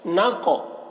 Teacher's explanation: اور قاف حروف قلقلہ میں سے ہے تو قاف میں قلقلہ کریں گے